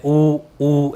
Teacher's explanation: जैसे ऊ, देखो एकदम गोल है, फेस गोल हो रहा है, अपने लिप्स होठ जो हैं वो गोल हो रहे हैं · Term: वृत्ताकार